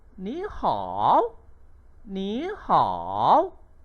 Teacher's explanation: Tetapi dalam sebutan kita tukarkan ni kepada nada yang kedua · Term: nada perubahan